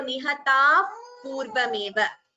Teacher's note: Visarga followed by pa, upadhmaniya